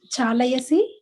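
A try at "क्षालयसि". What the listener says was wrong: Oh, Kshalayasi. You have to say properly. Kshalayasi. I think I heard Chalayasi.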